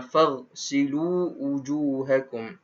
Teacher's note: Ghain ni tidak ada qalqalah, maka tidak boleh qalqalahkan. Tak boleh baca faghsilu wujuhakum.